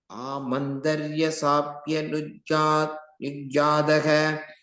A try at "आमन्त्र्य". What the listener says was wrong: Again, the first word amantrya. Amantarya, you're saying. A tra is only a half tradanga. So amantrya.